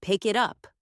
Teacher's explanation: Where the K sound connects to the vowel in it and the T sound connects to the vowel in up.